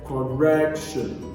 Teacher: stress is placed on the first syllable nation what about correction the primary stress is placed on the second syllable